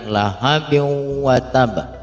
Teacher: Ada tanwin ketemu huruf waw, di mana hukum tajwidnya adalah idgham bi gunnah, yang harus kita gunnahkan tanwinnya dimasukkan ke huruf waw